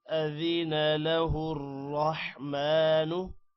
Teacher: أذن له الرحمن را موٹا کریں گے